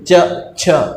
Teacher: तो तालु के जब वर्ण बोल रहे हैं अपन तो पाएंगे कि जुबा का अगला हिस्सा तालु के ऊपर साइड लग रहा है